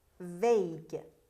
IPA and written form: veɪɡ (vague)